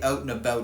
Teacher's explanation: the onset of these two diff thongs is centralized before voiceless consonants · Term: Canadian raising